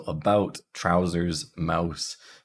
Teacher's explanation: that a is starting a little bit more Central than our regular a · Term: ow sound